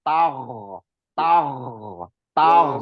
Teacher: wastagfir, wastagfir, wastagfir. Ya, intinya jangan memantul di ghin. Dia mengalir aja rokhawah